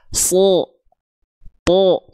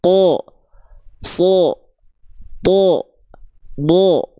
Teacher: huruf tebal itu terdengar seperti vokal O, bukan vokal O yang bulat-bulat